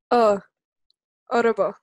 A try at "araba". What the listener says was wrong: Yeah, araba.